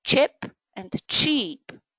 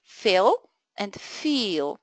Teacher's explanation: pairs of words which differ only with one significant feature the length of e